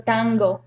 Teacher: So for example, in the word tango, the G is a velar or a velar sound. So that N is also going to take the point of articulation of a velar sound